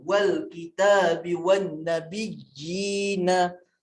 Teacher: Jadi untuk mat tamkin kita akan baca dengan dua harakat sahaja.